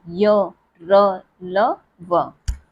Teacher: ठीक, सघोष वर्ण कौन कौन से, य, र, ल, व, ये हमारे क्या है, सघोष। इनको जब हम बोलते हैं तो हमारी जो स्वर तंत्रियों में कंपन होता है